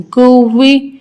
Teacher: یہاں پہ بھی واو کو جماؤ کے ساتھ پڑھنا ہے، اور واو کی ادائیگی میں ہم نے بہت خیال رکھنا ہے کہ ہمارے ہونٹ گول ہوں